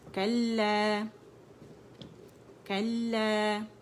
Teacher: और जब इसको हमने खोला मुशद्दद को तो पहले हमने लाम साकिन हमें मिला और दूसरा जो है हमें लाम ज़बर के साथ मिला। जो लाम ज़बर है उसको ये अलिफ मबदूदा खींच रही है, ठीक है, 2 काउंट्स के लिए